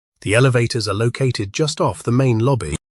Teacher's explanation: Just off functions as a location phrase, and the word off receives stress because it carries the directional meaning. In the phrase main lobby, main describes lobby, so lobby receives the stress.